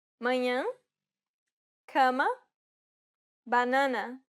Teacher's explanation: it's the closed variant of the A sound. Compared to the previous sound, the jaw isn't opened as wide.